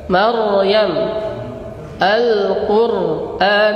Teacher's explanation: Huruf ra-nya harus tafkhim